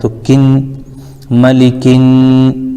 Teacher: الف اور لام کو نہیں پڑھیں گے، ڈائریکٹ کاف کو نون ملا دیں گے